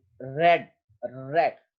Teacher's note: tongue curls up slightly on itself when produced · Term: रेट्रोफ्लेक्स